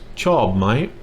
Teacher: Two tones. Chob, falling, and my rising.